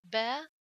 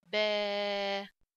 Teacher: the duration of the long vowel is double to the short vowel, which means when I read the letters with fatha, with the longer vowels, I read it like double fatha, okay, like the duration of the double fatha, like ba fatha, ba. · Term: long vowels